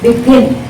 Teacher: Gin, second syllable. So now the stress is on the second syllable.